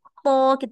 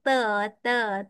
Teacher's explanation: ta kena start dengan lekat kat atas baru turun. Bukan duk bawah ta. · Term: itbak